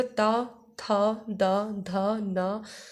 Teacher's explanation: दंत की सहायता से बोले जाते हैं। इस हमारी जिह्वा दंत पर लगती है, इसलिए ये क्या हो जाएगा, इसका उच्चारण स्थान हो जाएगा दंत।